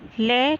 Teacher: अर्धस्वर, अर्धस्वर ये है कि होते तो व्यंजन है, लेकिन इनकी मात्रा स्पर्श करती है, स्वरों के इनमें कम टाइम लगता है, इसलिए इन्हें अर्धस्वर भी कहते हैं। इसमें ल, ल का साउंड हम जब करेंगे तो हमारी जिह्वा दांत के जो पीछे मूर्धा वाला स्थान है वहीं पे स्पर्श करती है और जिह्वा वहीं रहती है, और जो साउंड है वो बाहर निकलता है, इसलिए इसको कहेंगे मूर्धा। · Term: पार्श्विक